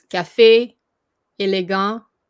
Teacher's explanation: I said it's the acute accent, also known as accent aigu. This accent indicates a closed E sound, such as café, élégant.